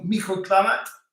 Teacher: you don't pronounce the T there